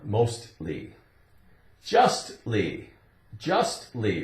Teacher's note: if we say mostly, L-Y at the end, it still has that T sound